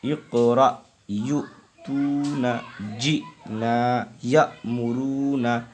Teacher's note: حمزہ ساکنہ کے پڑھنے میں جھٹکا ہوتا ہے